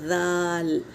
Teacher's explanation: दाल बारीक हरूफ है, हमेशा बारीक पढ़ेंगे, दाल पढ़ेंगे, दौल नहीं पढ़ेंगे इसको, दाल। दाल का भी मखरज ता की तरह दोनों दांतों के बीच में ज़बान की टिप्स डालकर अदा करेंगे